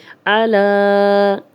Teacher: عین کی کلیئر آواز آئے، حمزہ نہیں بنانا، کھڑا زبر ہے، 2 حرکات لمبا کریں گے، اور آگے پھر حمزہ، کھڑا زبر کے بعد حمزہ آ گیا تو ہم اس کو بھی 4 حرکات لمبا کر لیں گے۔